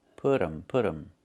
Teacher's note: It's put them. We make a reduction. We say put 'em. The T changes to a fast D.